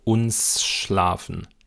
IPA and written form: ˈʊnsʃlaːfn̩ (uns schlafen)